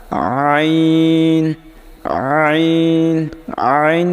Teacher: তারপরেরটা আইন আইন আইন কিন্তু বলার সময় গলার একেবারে শেষ ভাগ থেকে আইন উচ্চারণ হবে